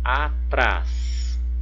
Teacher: O trás é a sílaba mais forte, é a última.